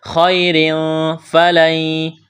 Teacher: را کے نیچے 2 زیر تنوین ہے، را کو باریک کرنا ہے۔ تنوین کے بعد فا ہے، اخفا کریں گے، آواز ناک میں چھپائیں گے